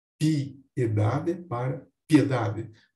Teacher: diante de um hiato, que são sílabas diferentes, eu faço a junção em uma única sílaba, com o fenômeno da sinérese